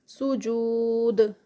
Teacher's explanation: سجود یہاں پر اینڈ پہ واو مدہ سٹاپ پہ ہے تو اس کا 4 کاؤنٹس کا اسٹریچ اور ساتھ میں دال ہے، اینڈ پہ دال آ رہی ہے تو یہاں پر کلکلا ہوگا دال کا